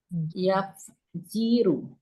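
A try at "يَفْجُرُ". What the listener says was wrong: Yafjuru. Bukan yafjiru ya. Yafjuru.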